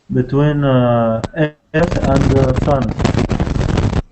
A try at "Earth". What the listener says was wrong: Yeah, and I think when you say earth, you need to say this bird sound like birth. Earth. Earth. Earth is a bit too like chair. This is there's 2 sounds in English. One of them is like chair, and one of them is like bird, and earth is like bird. Earth, bird.